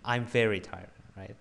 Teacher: you got to start with high intonation